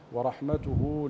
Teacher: ابين همس الحاء وصله الصغرى تحت الهاء